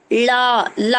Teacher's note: நாக்கோட ஓரம் மேல்வாய் பல்ல பொருந்தும். அப்போ ஓரம்னா எல்லா ஓரமே தான்.